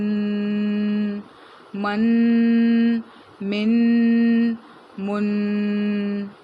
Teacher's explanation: میم 2 زبر من، میم 2 زیر من، میم 2 پیش من، من من من. ایک وائبریشن آپ کی نوز میں ہوگی، اسی کو ہم تنوین یعنی غنہ کرنا کہتے ہیں